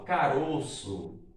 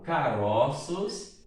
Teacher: Então, é plural com metafonia, tá bom? É quando no singular o O é fechado e no plural o O é aberto